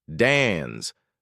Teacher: Americans say dance like dens, but Brits stretch it out.